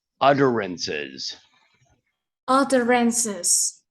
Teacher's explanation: that double t sounds a little bit like a d in american english